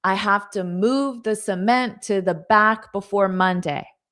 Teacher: there just happens to be stressed words: move, cement, back, Monday. So those are the words you hear the most.